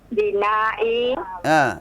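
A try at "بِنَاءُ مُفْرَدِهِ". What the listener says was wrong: kenapa bina'i kasrah dibaca? Enggak, salah bacaannya. Bukan bina'i, tapi bina'u dibaca u. Bina'u.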